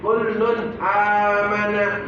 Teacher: jadi enggak pakai yang namanya dengung pakai namanya jelas ya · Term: izhar